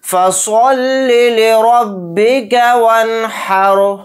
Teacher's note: تو یہاں پر دیکھیے سواد کو موٹا یعنی پر پڑھیں گے، پھر یہاں پر را کے اوپر زبر ہے تو را کو بھی موٹا یعنی پر پڑھیں گے۔ یہاں پر رائے ساکنہ سے پہلے ہا کے اوپر زبر ہے تو اس رائے ساکنہ کو بھی موٹا یعنی پر پڑھیں گے۔